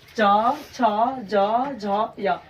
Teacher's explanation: चवर्ग हमेशा हम क्या होता है? चवर्ग तालु से बोलते हैं।